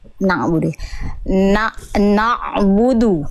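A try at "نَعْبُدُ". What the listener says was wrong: Oke, nun dan ain adalah huruf yang tipis. Maka jangan no.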